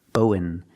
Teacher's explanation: We don't say and, we say n.